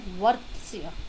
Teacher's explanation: क्यों आधा है, फिर से उच्चारण सुनिए, वर्त्स्य, त और स जल्दी ख़त्म हो रहे हैं, य देर तक है, तो त स दोनों आधे हैं, उसके बाद य पूरा है, तो य ने इन सबको सहारा दे दिया।